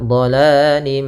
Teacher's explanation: sambil ditahan suara mimnya, gunnahnya 2 harokat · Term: idgham naqis